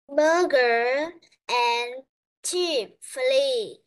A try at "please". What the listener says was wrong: You say please, not flee.